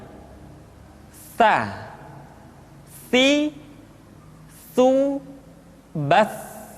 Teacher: Ta dikeluarkan dengan menyentuhkan ujung lidah kita dengan dinding dua gigi seri bagian atas. Diucapkan dengan suara dan nafas yang terdengar mengalir. Ta, ti, tu, bat. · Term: huruf Ta